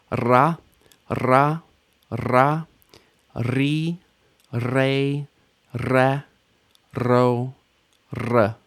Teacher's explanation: we roll our RS in standard pronunciation